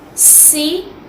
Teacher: سین میں بھی سیٹی کی آواز آنی چاہیے۔